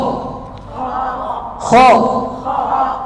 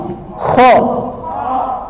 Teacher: Kha, lidahnya agak naik ke atas, ke arah langit-langit. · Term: Huruf isti'la